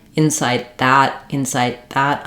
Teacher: about then that t is going to turn into a flap if I'm linking to a consonant inside that inside that I'm going to use that unreleased stop te